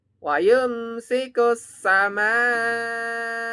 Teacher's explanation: Pada mimnya ini ada bacaan mat wajib mutasil. Bacaannya 6 nih, tandanya ada merah, harokat yang tidur merah ini artinya 6 ya teman-teman, panjang ya.